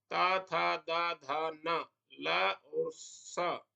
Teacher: तो इस विषय में महर्षि पाणिनि कहते हैं वर्णोच्चारण शिक्षा में लृ तु लसा दंत्यः स्वलृ प्लुतरि लृ ता था दा धा न ल और स इन वर्णों का दंत स्थान अर्थात इनका उच्चारण दांतों में जीवा लगाकर करना चाहिए। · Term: दंत्य वर्णों